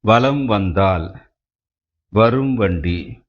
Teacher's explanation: மகர மெய்யானது தனக்குரிய அரை மாத்திரையில் இருந்து குறைந்து கால் மாத்திரை அளவில் ஒலிக்கிறது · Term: மகர குறுக்கம்